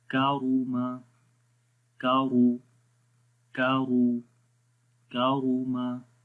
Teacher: آگے ہے کاف زبر کا، را پیش رو، کارو، میم زبر ما، کاروما، کاف کو باریک پڑھیں گے، را کو موٹا پڑھیں گے